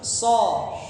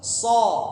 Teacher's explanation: Disambung soda. Huruf so, ingat lidahnya yang ke atas hanya bagian pangkal.